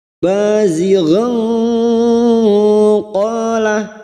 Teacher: fathah tanwin bertemu qof ikhfa Hakiki kita samarkan bunyi fathah tanwin dan mendengung selama tiga harakat